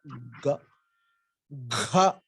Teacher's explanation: So ga, gha is the same ga with a mahaprana gha.